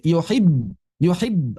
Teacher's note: Ada dorongan sebentar. Yuhibb langsung berhenti.